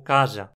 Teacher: Pois bem, o que acontece é que quando o Z sofre rotacismo não costuma ser um Z laminar como esse do português, mas sim um Z apical, pronunciado com a ponta da língua